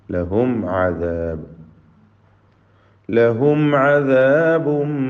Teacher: ലഹും സാക്കിന മീം ഇൽഹാർ ഷഫവിയാണ്, മണിക്കാതെ വെളിവാക്കണം